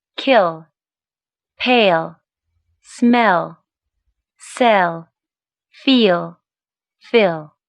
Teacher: the voiced alveolar lateral after front vowels